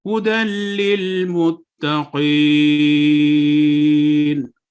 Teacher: اب یہاں پہ ہم نے متقین پر وقف کیا نون پر، تو ہم نے اس کو 2 سے 6 سیکنڈ تک لمبا کیا